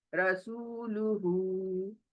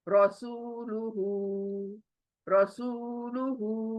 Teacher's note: रॉ जल्दी, सू वाव मद्दा, देखिए सू वाव मद्दा, लू जल्दी, हु उल्टा पेश।